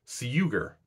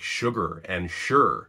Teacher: This means that English sugar used to be pronounced something similar to siuger, but you only have to say that a few times before you realize that's kind of hard to pronounce. So it underwent palatalization, where the siu became shu. This is an example of a wider phenomenon called yod coalescence, where certain consonant clusters featuring the palatal approximant undergo a fusing to become a sibilant.